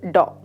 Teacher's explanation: Voiced cerebral plosive, DAW.